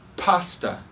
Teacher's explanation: Você não vai falar pasta, pasta, com esse som de P bem fechado como no português. Você precisa pronunciar P. É só, na verdade, o ar saindo. Não existe vibração nas cordas vocais. Essas duas letras, essas duas consoantes não são pronunciadas com a vibração nas cordas vocais.